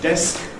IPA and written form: desk (desk)